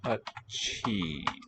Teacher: Achi, aspirated. So doubled consonant, but also aspirated.